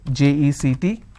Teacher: I need to stress on the second syllable